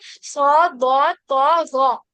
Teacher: सौ, दौ, तो, ज़ौ में क्या करते हैं, हम कसरा के साथ भी इसको मोटा पढ़ते हैं